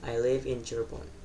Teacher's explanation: Intonasi turun membuat pernyataan terdengar jelas, tegas, dan yakin.